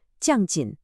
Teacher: The big giveaway is that sharp, falling fourth tone in jin.